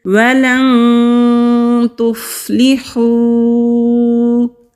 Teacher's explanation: نون ساکن کے بعد تا آ رہا ہے تو یہاں پر اخفا کریں گے۔ اخفا نرم غنہ کو کہتے ہیں۔